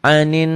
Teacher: Gunnah itu double, dibaca double karena ada tasydidnya, dengung ke hidung dan ditahan gitu ya. Ada panjangnya 1 alif sampai 1 alif setengah atau 2 sampai 3 harokat, 3 ketukan.